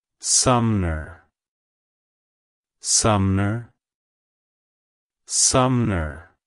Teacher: emphasize the first syllable SU hm and then the second syllable like Hello suar Goodbye